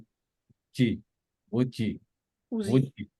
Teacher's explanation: আমরা যখন জিমটা বলবো, জিমটা বলার সময় আমাদের জিহ্বার মাঝখানটা উপরে তালুর সাথে লাগবে